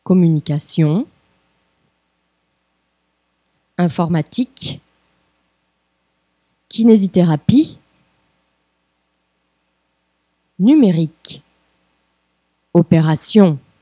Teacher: a tônica está sempre na última sílaba.